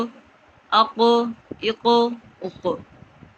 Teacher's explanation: اس کی یہ حروف قلقلہ میں سے اس کی آواز لوٹتی ہوئی محسوس ہو